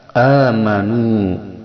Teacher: hamzah ini makharijul hurufnya berada di pangkal tenggorokan, yaitu yang dekat dengan dada, yang mana huruf pada pangkal tenggorokan ini ada 2, yaitu hamzah dan ha.